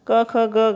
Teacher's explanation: यह सारे व्यंजन गले से स्पर्श कर निकलते हैं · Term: कंठ व्यंजन